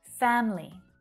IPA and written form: 'fæm li (Family)